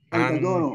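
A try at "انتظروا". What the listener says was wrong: Antazoro. Intazoro ya, bukan antazoro. Intazoro.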